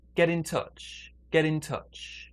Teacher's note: the phone the next one get in touch get in touch big stress is on touch smaller stress on get